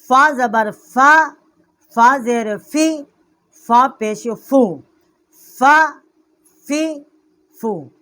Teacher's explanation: فا کا جو مخرج ہے یہ نیچے کے ہونٹ کا شکم ہے اور ثنایا علیا کا کچھ کنارہ ہے